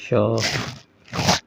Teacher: श तो ऊष्मा निकलती है श घर्षण होता है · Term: उष्म वर्ण